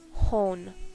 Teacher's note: followed by a vowel or at the end of an utterance n indicates that the preceding vowel is long and nasalized